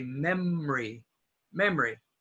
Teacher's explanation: we usually cut the middle oh and say memory memory now this e is stressed it's a long word and · Actually, we usually cut the middle O and say memory.